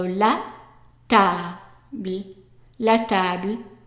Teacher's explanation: And remember, emphasis on the ta.